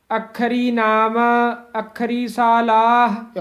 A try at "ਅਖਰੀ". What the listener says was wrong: ਅੱਖਰੀ ਪਦ ਕਸ ਕੇ ਹੀ ਉਚਾਰਨ ਕਰਨੇ ਹਨ, ਅਖਰੀ ਨਹੀਂ ਕਹਿਣਾ ਹੈ। ਅਖਰੀ ਨਾਮ ਅਖਰੀ ਸਾਲਾਹ। ਅਖਰੀ ਪਦ ਤੇ ਵਿਸਰਾਮ ਹੈ।